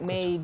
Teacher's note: So usually when you say made, there's a little bit more air that comes out in the end, right?